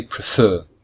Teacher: there are two syllables and the second syllable is stressed